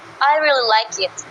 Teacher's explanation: the word really is stressed to emphasize emotions